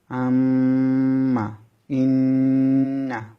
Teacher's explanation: 17 নম্বর মাখরাজ, নাকের পাশে হতে গুন্না উচ্চারিত হয়